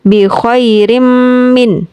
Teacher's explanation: ada tanween diikuti huruf mim. Jadi kami membacanya sambil bersenandung. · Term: Idgham Bighunnah